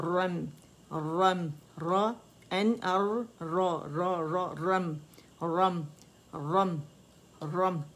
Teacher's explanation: جب ساکن کریں گے تو رم ہو جائے گا، را میم بائی رم، رم روم نہیں کریں گے، میم موٹا نہیں کریں گے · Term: باریکی سے